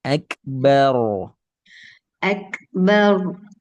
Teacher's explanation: Tebalkan ro karena dia wali fathah.